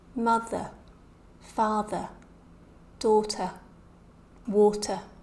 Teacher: we can just really hear a schwa sound, this very weak vowel sound with nothing following it.